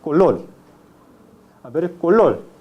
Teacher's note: La lateralización de la vibrante, es decir, la consonante vibrante R se convierte en la consonante lateral.